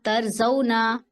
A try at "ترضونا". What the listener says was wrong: آپ کی حرکت لمبی ہو رہی ہے، ترضونا، صرف نا نہیں ہے، ایک حرکت پڑھیے، ترضون۔